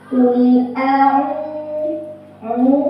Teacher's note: Cara bacanya ainnya dipanjangkan 2 harokat.